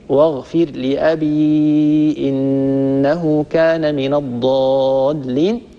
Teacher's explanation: قرأ حفص رحمه الله بإسكان الياء، واغفر لأبي إنه كان من الضالين، طبعا وهو على أصله في المد المنفصل.